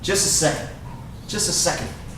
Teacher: once again that t is silent when you say it fast